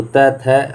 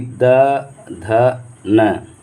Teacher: त, थ आपका हो गया अघोष व्यंजन, और बाकी द, ध, न ये आपका हो गया सघोष व्यंजन